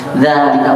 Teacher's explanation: za-nya dibaca panjang walaupun tidak ditulis alif. Nah, makanya dia dikenal sebagai harfun tuntaqul wala tuktab, huruf yang dibaca namun tidak ditulis.